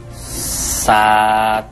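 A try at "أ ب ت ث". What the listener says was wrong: Kebalik, Pak. Yang betul itu abatasa. Yang titiknya ada dua itu dibacanya itu ta. Yang titiknya itu ada tiga dibacanya sa. Jadi abatasa.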